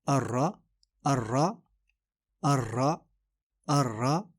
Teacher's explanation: را موٹا پڑھا جائے گا، اور یہ انگلش آر کی طرح نہیں ہے